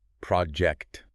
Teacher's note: The stress is heavily on the first syllable. · The energy drops on the second half.